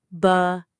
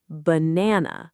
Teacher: It's not ba-na-na with 3 strong sounds. It's actually more like banana with a soft schwa at the start and at the end.